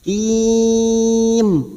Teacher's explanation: Mad arid li sukun kita panjangkan 3 sampai 6 harokat, tetapi biasanya kita memanjangkan 4 harokat, maka kita konsisten 4 harokat kita panjangkan. Hakim, im, jangan lupa ujungnya bibir kita tertutup karena ada huruf mim